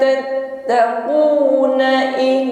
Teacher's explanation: Fa kaifa tattaquna in nun sukun bertemu kaf ada hukum ikhfa. Mengucapkan nun sukun langsung kita samarkan pada huruf kaf, masuk pada makhraj kaf sehingga bunyi yang keluar ada bunyi eng ya. Dengung dengungnya ringan saja.